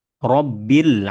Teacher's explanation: Ro-nya terkategori ro tafkhim. Kemudian ketika berharokat fathah ya, dia tebal, kemudian makhrajnya ada di ujung lidah, nempel ke langit-langit atas.